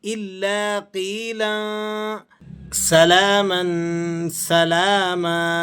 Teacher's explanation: الا قیلا، یہاں پر لام پر 2 زبر کی تنوین ہے اور اس کے بعد سین حروف اخفا کا آ گیا، تو آپ یہاں پر اخفا ادا کریں گے